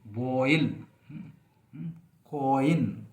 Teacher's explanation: तो आप देखें इसके एग्जाम्पल देखें आप, OE, ओ, ये आप देखें आप बैक वोवेल है, फिर ये फ्रंट वोवेल के आ जाता है